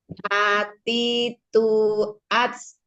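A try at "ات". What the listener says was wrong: Nah, itu sama. At. Nah, itu terlalu buru-buru, terlalu barengan. At, diam dulu di tak, di makhraj tak, ujung lidahnya tempelin ke ujung ke gusi tempat tumbuh gigi sari atas. At. Diam dulu. At. Coba diam dulu. At. At. At. At. Huruf tak gitu ya. Hamesnya ya. Sukun ya.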